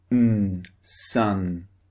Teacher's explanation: the mouth is open and the tongue is blocking the air coming through the mouth the tongue is towards the front of the mouth